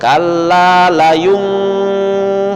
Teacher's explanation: bibirnya tuh tidak ditutup rapat, bukan layum membentuk huruf M, tetapi dia kayak samar gitu, bibirnya tuh kayak masih dibuka sedikit. Kalla layum masih terbuka sedikit. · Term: iqlab